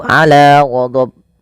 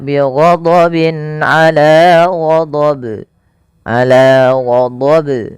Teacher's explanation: Nah, itu juga salah. Yang benar adalah tidak menambahkan hamzah dan dia harus memantul. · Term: qalqalah kubra